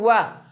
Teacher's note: जब हम बोलते हैं वा तो ओष्ठ अंदर की तरफ आता है, दांत को स्पर्श करता है, इसलिए कहते भैया वकारस्य दंतोष्ठम।